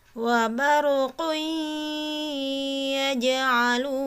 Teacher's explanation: Nah, bunyi an ya, bunyi n pada tanwinnya itu dibuang, dihilangkan langsung masuk ke huruf ya. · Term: idgham bigunnah